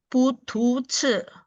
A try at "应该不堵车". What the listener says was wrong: Oh, tunya bersih. Jadi nggak usah pakai H ya. 堵车. 再来一次，应该不堵车。